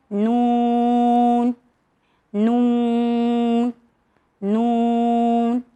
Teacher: مگر نون ایک ایسا لیٹر ہے جسے گننا بھی کہا جاتا ہے، جس کی ساؤنڈ ناک سے ادا ہوتی ہے